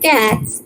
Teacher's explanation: We won't use the alveolar T or dental T that is used in English, but we are most inclined to use the retroflex T